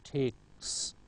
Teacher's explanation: K is voiceless, so followed by voiceless s